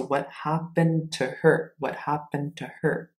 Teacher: Notice, we don't say the D. We don't say the D. We take the D, get rid of it.